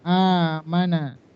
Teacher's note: Maka hamzah yang kedua sukun diganti menjadi alif. Bacanya dipanjang. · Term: mad badal